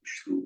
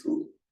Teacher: they don't have the sh in Pali, so it becomes a s. So you do lose that distinction, and it can occasionally create an ambiguity in Pali.